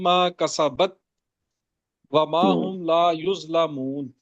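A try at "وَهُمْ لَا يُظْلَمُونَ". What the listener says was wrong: نہیں نہیں، وہ ما وہم نہیں ہے، وہ ہم لا یظلمون۔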